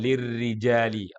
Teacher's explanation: Ro yang kasrah hukum bacaannya apa tarqik tipis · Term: tarqiq